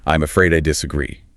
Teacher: The pitch starts mid-level and then just drops sharply at the end of the sentence. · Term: flat falling intonation